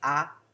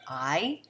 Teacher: Usually in the South, we have a tendency to say ah rather than I.